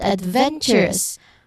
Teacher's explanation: the stress falls on the third syllable from the end.